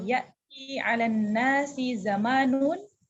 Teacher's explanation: untuk hadis ke-4, kalimat ya'ti, ti-nya panjang.